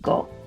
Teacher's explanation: Go has more vibration at the beginning, go, because you close your throat, and ko is just like your k.